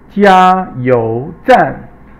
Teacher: 加 is first tone. 油 is second tone. 站 is fourth tone.